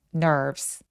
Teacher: 맨 마지막에 nerves는 nervous 아니고 nerves. 요 V는 F처럼 조금 가볍게 처리하셔도 괜찮아요.